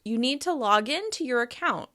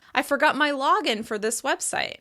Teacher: As you can hear, I'm stressing the particle in and that is indicating that this is an action verb. · When we're using the phrasal verb in noun form, you can hear I'm stressing log.